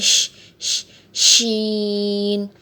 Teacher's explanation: شین کو ادا کرتے ہوئے اس میں تھوڑا سا شور محسوس ہوتا ہے